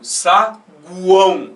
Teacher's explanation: São 3 sons de base vocálica pronunciados de uma vez só na sílaba. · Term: tritongo